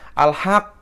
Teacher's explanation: Jadi kayak ditahan dulu. Tahannya ini adalah tasdid, kemudian melepaskan setengahnya itu adalah qalqalah.